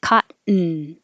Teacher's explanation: The N becomes its own syllable. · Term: syllabic N